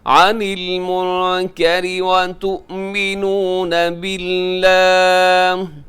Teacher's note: را باریک رکھیے گا کیونکہ را کے نیچے زیر ہے